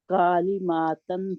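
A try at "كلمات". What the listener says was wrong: اچھا، کالی ماتن کیوں ہے؟ کا کے آگے کیا ہے؟ ہے، کا کو کھینچ کتنے کیوں ہے آپ؟ الف تو نہیں ہے آگے، وہ تو لام ہے۔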